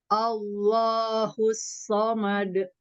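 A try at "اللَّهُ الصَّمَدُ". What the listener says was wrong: Bukan o. Alif fathah Allah lam dari lidah. Ngalirin soundnya. Allahus samad.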